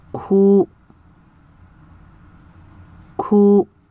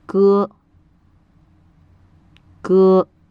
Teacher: in a somewhat softer sound than the English letter G makes the difference between G and C is that the C is aspirated accompanied by a puff of air while G is not